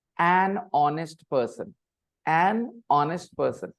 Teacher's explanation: Basically, an is not pronounced separately. Na sound goes with the noun that comes after.